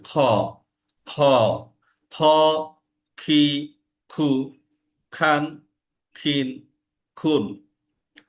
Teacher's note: তার উচ্চারণটা হচ্ছে খ। এবং এটা হালকা একটু কর্কশ সাউন্ড হয় গলার ভিতর যখন এটা উচ্চারণটা হয়। এবং গলা আমার যখন পরিষ্কার করি, যখন খ খ করে সাউন্ড করি, ঠিক এরকম করে সাউন্ডটা হবে খ, খ, খ, খি, খু, খান, খিন, খুন।